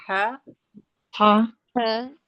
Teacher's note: हलक के आखरी हिस्से से सीने वाले हिस्से से ह और हमजा दोनों अदा होते हैं।